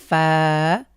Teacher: উপরের যে দাঁত রয়েছে এটা আমাদের নিচের ঠোঁটের পেটে স্পর্শ করবে